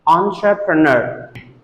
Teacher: Stress goes on the last syllable, so we have to pronounce it entrepreneur.